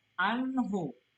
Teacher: Idhar itu cara bacanya, hukum bacanya adalah jelas. Jadi non sukun ketemu dengan ha adalah idhar. Bacanya adalah jelas.